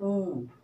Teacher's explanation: देखिए कौन से हैं इसमें, जैसे आपने कहा छोटा ऊ, अब जब आपने ऊ कहा तो दोनों होठ सिकुड़े आगे की तरफ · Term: ओष्ठ